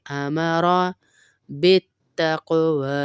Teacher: काफ पे फिर कलकला करेंगे